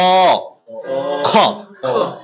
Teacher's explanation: এই খ তে দেখেন বাতাসটা কিন্তু হাতে লাগছে লাগছে